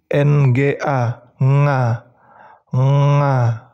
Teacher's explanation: mengucapkan huruf nga itu lidah paling belakang kalian tuh menyentuh langit-langit